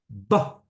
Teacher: both lips come together, the voice is turned on, the sound explodes out of the mouth, right? So it becomes tactile, you're feeling it.